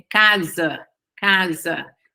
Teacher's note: Esse A é uma vogalzinha que se chama schwa